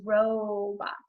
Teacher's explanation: i hear that long o sound in the first syllable so it's an open syllable